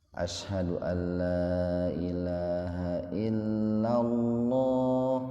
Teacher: Didahului oleh fathah. Maka lafaz Allahnya atau huruf lamnya dibaca tebal, diberi tafkhim.